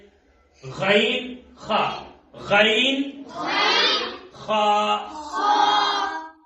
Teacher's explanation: غین اور خا منہ کی طرف جو حلق کا حصہ ہے وہاں سے ادا ہوتے ہیں